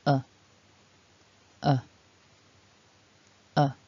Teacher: this is a very relaxed vowel we just want to open the mouth a little keep the tongue and the lips completely relaxed just rest that tongue in the bottom of the mouth we vibrate the throat and we keep this sound short and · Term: schwa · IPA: /ə/